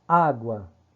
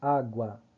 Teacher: Olha a força do A, olha a força do U, quando você pronuncia. É um ditongo crescente.